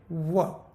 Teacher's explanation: व का उच्चार दंत्योष्ठ है, दांत और होंठ दोनों को मिलके व, दांतों के पीछे जीभ जाती है व।